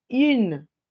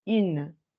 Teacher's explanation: la forma en la que yo voy a decir que eso está en femenino es quitándole la nasalización.